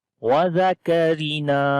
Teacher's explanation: کاف کو باریک پڑھیں گے, را کو بھی باریک پڑھیں گے